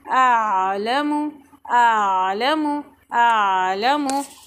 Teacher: हमज़ा की आवाज़, आइन की आवाज़, दोनों को अलग अलग पढ़ेंगे। अअलमु नहीं पढ़ेंगे, आलमु नहीं पढ़ेंगे।